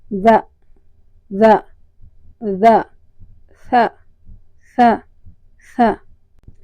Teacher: جو زبان کی نوک ہے وہ اوپر والے دانتوں سے ٹکراتی ہے۔ جب زبان اوپر والے دانتوں سے ٹکراتی ہے تو اس کے نتیجے میں دال اور سا ادا ہوتا ہے۔